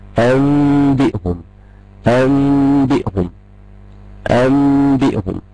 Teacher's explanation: بدل ما هنطق نون هنطق ميم، هنطق ميم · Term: الإقلاب